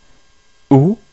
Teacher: Avec dhamma, on prononce OU et non pas O.